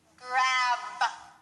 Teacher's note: you need to say the strong B sound closing and opening your mouth and using your voice